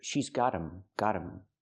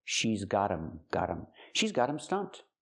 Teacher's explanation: The T is a fast D because phonetically it's between vowels.